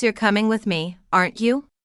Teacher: the sentence you're coming with me aren't you has a rising intonation at the end which shows it's a question